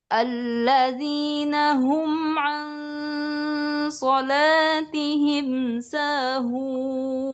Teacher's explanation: Sekarang datar awalnya, ujungnya tinggi.